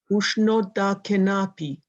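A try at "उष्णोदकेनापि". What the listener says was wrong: It's not so much the accent, it's the length of vowel. The A in Sanskrit, is always long. And the O is always long and the A is always long. Ushnodakenapi.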